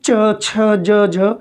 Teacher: वायु द्वार अधिक प्रबलता से बंद हो रहा है, वायु को निकलने में अधिक संघर्ष की ज़रूरत पड़ रही है। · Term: स्पर्श संघर्षी